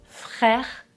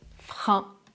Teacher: l'air qui passe aussi par le nez.